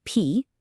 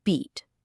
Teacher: First, the air of P in P, now the buzz of B in beat.